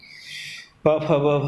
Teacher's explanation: प फ ब भ में है, ओष्ठ है तो ब हो जाएगा, उसी वर्ग का तृतीय वर्ण।